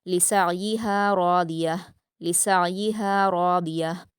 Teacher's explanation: रिया में र और दाद को पुर पढ़ेंगे